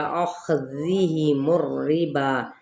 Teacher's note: واو ہونٹوں کی نا تمام گلائی کے ساتھ اور خا پر پڑھا جائے گا۔